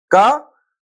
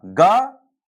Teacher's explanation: अल्प वायु निकलती है, यानी कम हवा मुंह से निकलती है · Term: अल्पप्राण